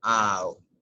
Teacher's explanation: jaw is lowered. Your mouth is open, but at the end your lips are protruded.